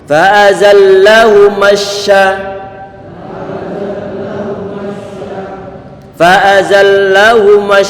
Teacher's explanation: Kata syaitan di sini shinnya tidak dalam kondisi dhammah, sehingga bibir biarkan standar saja dalam keadaan semula.